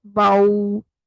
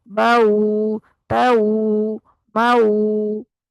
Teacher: वाव साकिन से पहले हर्फ पर जबर होगी तो ये वाव लीन कहलाएगी। जैसे बा जबर वाओ बाऊ, तो इसको नरमी से अदा करेंगे और गोल भी करेंगे। बाऊ ताऊ माऊ, इसको भी दो हरकत बाऊ ताऊ माऊ, इस तरह जल्दी से नहीं पढ़ना, दो हरकत जितना इसकी अदायगी में टाइम लगेगा।